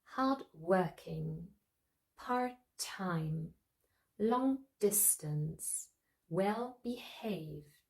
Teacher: those adjectives are usually stressed on the second syllable the second word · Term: compound adjectives